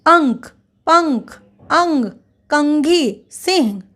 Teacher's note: म के समान होता है। वहीं क, ख, ग, घ और ह के पहले अनुस्वार का अंग के समान उच्चारण होता है।